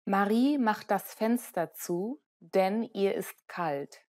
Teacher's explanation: the pitch rises at the end of the first clause and falls at the end of the sentence